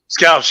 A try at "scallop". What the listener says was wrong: Oh, well, you're saying it wrong. That's the problem. There's an A. in there.